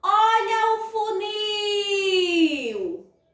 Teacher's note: Qual é a sílaba que eu estendo mais o som? É o nil. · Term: sílaba tônica